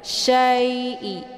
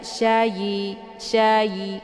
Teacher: Cara bacanya dilembutkan saja. Syai'i, jangan dibaca syayi, syayi, keluar bunyi yi, ya. Tapi dia dilembutkan saja. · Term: huruf lin